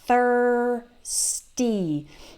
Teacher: remember to to do that th with your tongue between your teeth